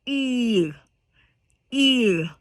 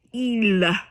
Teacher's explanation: So the L is kind of silent. It's not another consonant to be like pronounced.